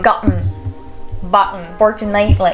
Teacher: Le glottal tea, ça va être un thé qui va être avalé